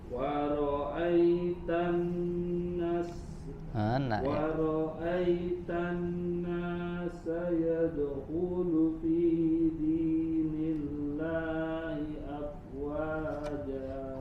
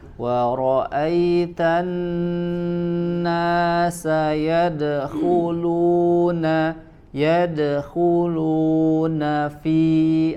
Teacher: Huruf nunnya, Kak, ketinggalan. wa ra'aitan nasa yadkhuluna fi, ada huruf nun di situ.